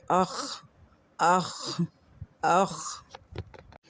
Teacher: اس کا مخرج ادنائے حلق ہے، یعنی گلے کے حلق کے اوپر والا حصے سے یہ ادا ہوتا ہے۔